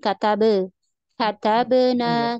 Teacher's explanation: ya nanti soalnya di sini tidak ada tasdid He hanya qqala kalau sepertinya Nun ada tasdid gitu ya itu yang kurang tepat karena tidak ada tasdid